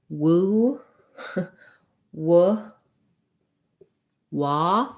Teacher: Definitely the woo is hard because a W, a w sound, is really a glide between an oo and a schwa